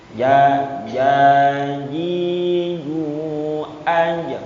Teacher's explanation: Ja, ji, ju, aj, bukan ujung lidahnya, tengah lidah.